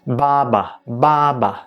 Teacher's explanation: the fifth tone is a very short tone that is not so common